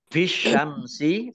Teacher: Alif Lam Syamsiah karena tidak dibaca langsung masuk ke huruf berikutnya yaitu Shin